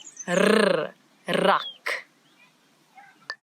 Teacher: This word it doesn't have the ch that we've been talking about, but now we've got a new sound in Afrikaans that a lot of people in different languages struggle with a little bit, and it's the rrr, as if your tongue is jumping up and down in your mouth